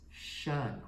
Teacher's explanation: it sounds like this shun like we hear in motion so it almost sounds like we have a sh and u n here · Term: tricky syllable